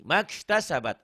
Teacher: Itu matobi'inya nggak dibaca panjang karena ketemu huruf mati.